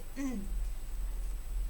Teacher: mis cuerdas vocales están vibrando es un sonido sonoro